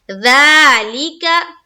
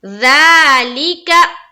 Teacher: ज़ा को भी खींचना है एक अलिफ के मकदार के बकदर